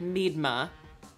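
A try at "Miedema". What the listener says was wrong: A little more emphasis on the E.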